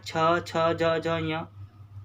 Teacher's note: मतलब ऐसे वर्ण जिनको बोलते समय जीभ मुख से भी स्पर्श करे और मुख से कैसी हवा निकले, गर्म वायु भी निकले। जीभ स्पर्श भी करे और गर्म वायु भी निकले। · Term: स्पर्श संघर्षी